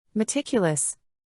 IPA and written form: məˈtɪkjələs (Meticulous)